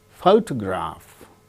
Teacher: In the case of the word photograph, the first syllable gains stress.